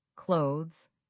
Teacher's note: almost sounds like close with a slight z sound at the end. · You're blending that th and s together smoothly.